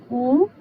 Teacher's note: Então U é uma vogal alta posterior arredondada, só que também classificada como nasal, porque tem um processo de nasalização aí indicado pelo sinal tio, tá? Então é uma vogal nasal alta posterior arredondada